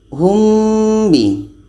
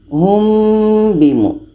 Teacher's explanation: Ketika kita sebut huruf mim ini, kita sudah merasakan huruf ba. Humbimu dan dibaca dengan dengung. Selanjutnya ini dalam surah Al-Baqarah ayat 76 ini ada mim mati bertemu dengan ba. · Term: ikhfa syafawi